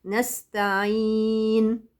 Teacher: فالنون عندي هي صفة اسمها صفة التوسط، يعني لا هي شديدة هقطع الصوت قوي ولا هي رخوة الصوت هيمشي معايا، هي حالة وسط، نستعين، انا مسكت مخرجها برها كده من الزمن بحيث بانت.